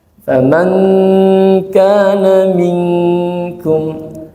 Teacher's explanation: Bisa eng persis kalau dia ketemunya huruf kaf. Faman kana minkum, nah, itu ketemu kaf, suara engnya jelas ya. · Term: ikhfa